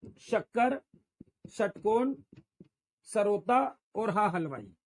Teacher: ऐसे वर्ण है जिनके उच्चारण में जो हमारे मुंह की हवा है वो घर्षण करती हुई यानी घिसती हुई या घर्षण करती हुई निकलती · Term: ऊष्म